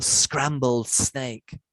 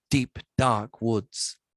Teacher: from the sibilant consonants of a scrambled snake to the plosive menace of deep dark woods